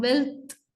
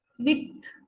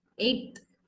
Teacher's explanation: The sounds I highlighted here in these words become dental because of the influence of the following dental consonant